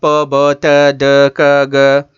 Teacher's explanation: Complete closure of the air passage. Complete closure of the air passage and released with explosion. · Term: plosive